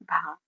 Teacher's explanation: हिंदी में स्पर्श घोष महाप्राण ओष्ठ व्यंजन ध्वनि भा है